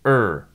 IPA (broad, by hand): əɹ